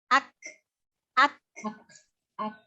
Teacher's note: jadi ditahan dulu suaranya, baru dihames, berikan sifat hames, yaitu mengalirnya nafas. Jadi dilepaskan nafasnya.